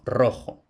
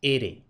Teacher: la R fuerte, es decir, vibrante múltiple, a principio de palabra